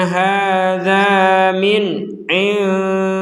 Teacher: Di sini ada nun sukun bertemu ain, maka kita membacanya dengan jelas.